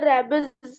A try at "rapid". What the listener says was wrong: रैबिस animal नहीं, रैपिड animals, not रैबिड। RAPID, रैपिड animals.